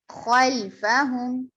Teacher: خوا کو موٹا پڑھیں گے، مصعلیہ حرف ہے